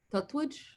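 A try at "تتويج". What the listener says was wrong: Yeah, but why is it tat? It's that. Tatweej. No, since we only have these 3 vowels, so it's not a big problem. Tatweej.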